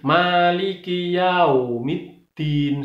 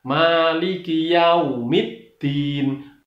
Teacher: Kemudian bunyinya adalah u, bukan o. Jadi yang benar yau, bukan yao.